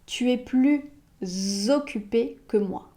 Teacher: Et il y a une exception dans l'exception. Si l'adjectif ou l'adverbe qu'il y a après plus commence par une voyelle, il y a une liaison.